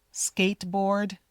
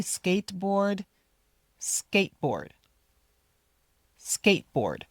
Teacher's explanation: You don't need to say the t. skateboard or the d.